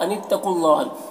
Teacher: अनित्तकू क़ाफ अनित्तकुल्लाह, क़ाफ को पुर पढ़ना है, हुरूफ मुस्तालिया में से है, और ये वाव और ये दोनों अलिफ और अल्लाह का पहला लाम नहीं पढ़ा जाएगा, इसमें कोई हरकत नहीं है। अल्लाह को पुर पढ़ेंगे, और लाम में देखिए खड़ा ज़बर है, और उसके बाद हा का ज़बर यहाँ पर वक्फ़ करेंगे तो सुकून से बदल जाएगा, तो फिर यहाँ पर मद्द आरिज़ वक्फ़ी होगा, और मद्द आरिज़ वक्फ़ी इसमें तूल तवस्सुत कसर तीनों जायज़ होता है।